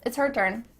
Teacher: the H at the beginning of his and her is cut off we don't do this all the time but it does happen